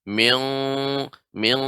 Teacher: mingnya ya ikhfa pada huruf qaf. Ini lebih dalam lagi.